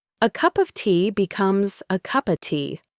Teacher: It's unstressed, so it reduces. The O sound becomes a schwa, and the F sounds more like a V, so of becomes uva.